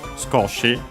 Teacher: Skoshi, a little. Accent on the ko. The u of is barely heard if at all because it's between upper's consonants.